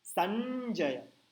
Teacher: तो इसका उच्चारण आप कैसे करेंगे, संजय करेंगे क्या, संजय, तथ दध न वाला न नहीं, च छ ज झ न वाला न, टंग पीछे जानी चाहिए आपकी, संजय।